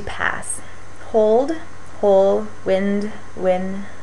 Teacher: One interesting one is consonant cluster reduction. So in cases where you have more than one consonant in a row, like in the word past, you have both the S and T at the end, it might be reduced to pass.